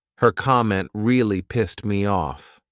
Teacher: this in a sentence and there are words that come after you almost don't hear that t so you can't really distinguish that it's in the past simple